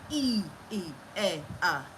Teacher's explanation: the front part of the tongue is elevated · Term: front vowels